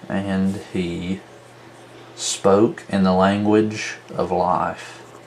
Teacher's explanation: two unstressed followed by stress two unstressed followed by stress two unstressed followed by stressed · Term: anapest